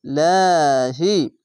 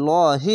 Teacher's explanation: যদি নিচে জের আসে তাহলে লাহি হবে পাতলা করে আর যদি উপরে থাকতো তাহলে লহি হতো